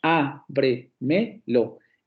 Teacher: Y el acento primario o el acento principal cae en la primera sílaba, que sería la antepenúltima sílaba. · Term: superproparoxítono